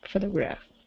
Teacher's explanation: Now this word here is photograph. So stress at the beginning.